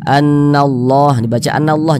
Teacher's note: Sebelumnya nih ada huruf yang memiliki tanda baca fathah, maka lafaz Allahnya dibaca tebal. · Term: dibaca tafkhim